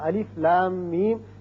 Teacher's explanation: اس آپ کی سہولت کے لیے یہ نیچے لکھ بھی دیا ہے کہ اس کو آپ نے جب پڑھنا ہے تو اس کا تلفظ یوں بنے گا الف لام میم، یعنی لا کو جب کھینچیں گے مد کریں گے 6 حرکات، پھر میم مشدد ہے اس پر غنہ کریں گے، پھر میم جب پڑھیں گے اس پر بھی مد کریں گے 6 حرکات اس کو کھینچیں گے.